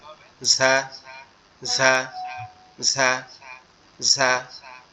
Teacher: জিহ্বার আগা নিচের দুই দাঁতের আগার সঙ্গে লাগবে, লেগে উচ্চারিত হবে ঝা, ঝা, ঝা, ঝা।